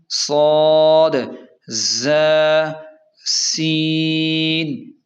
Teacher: ان کو حروف نرم کہتے ہیں کیونکہ یہ زبان کی نوک کو اوپر کے دانتوں کے کنارے سے لگا کر نرمی سے ادا کیے جاتے ہیں، اور درمیان میں ہیں سیٹی والے حروف، یہ بھی 3 ہیں: صاد، ظ اور سین۔ انہیں ادا کرتے وقت سیٹی جیسی تیز آواز نکلتی ہے